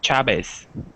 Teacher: in Argentina the V sounds like a b